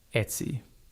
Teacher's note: stress the first syllable a little more than the second. That means your voice is slightly stronger on Et and a bit lighter on sy.